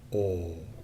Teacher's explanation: the lips go right the way forward and the tongue right the way back